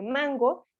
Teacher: la sílaba tónica recae sobre la penúltima posición